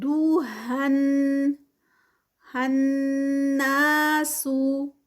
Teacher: ہن پہ جو ہے وہ غنہ کیونکہ نون مشدد